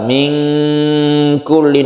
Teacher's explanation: Min kulli dibacanya samar, ikhfa artinya samar. Min kulli nunnya menjadi samar membacanya. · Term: ikhfa hakiki